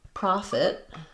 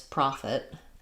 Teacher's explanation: a little confusing because the spelling is so different and that e might make you think that it should have an e like pet, but it is going to be an I sound like it because it's a reduced second syllable. So, they both have stress on the pro syllable.